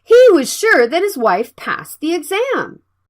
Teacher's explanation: The Z and S are similar sounds. You can make one sound for a bit longer.